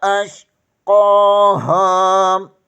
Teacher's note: قوف کے اوپر کھڑی زبر ہے، اسے ایک الف کے برابر کھینچ کر پڑھیں گے۔ ہا زبر کے آگے الف مدہ ہے، اسے بھی ایک الف کے برابر کھینچ کر پڑھیں گے۔